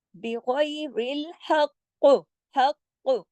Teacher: आपके गले में काफ पढ़ा जाएगा डबल, लेकिन मोटा, लेकिन हिल के